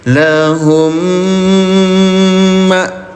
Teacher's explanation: Mim sukun bertemu dengan mim bertasdid ya, dengungkan cara bacanya, tahan 2 harokat. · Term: idgham mimi